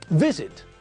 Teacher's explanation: Visit has got two syllables, but again, the stress is on the first part of the word, not the last part.